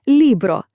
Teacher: Наголос на передостанньому складі